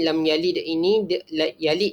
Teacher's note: Dal tersebut akan dibaca dengan lantunan yang rendah